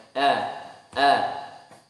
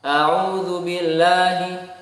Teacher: Dengan suara tipis, yaitu jangan sampai ada resonansi suara ke atas langit-langit, ke langit-langit bagian atas mulut. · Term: huruf hamzah